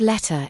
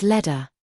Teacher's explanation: When t is between two vowels, t is pronounced as flap t, which is heard as d.